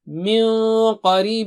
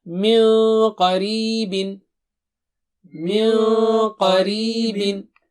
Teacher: یہاں پہ قا موٹا اونچا ہے تو نون ساکنہ موٹا اونچا ہوگا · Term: اخفا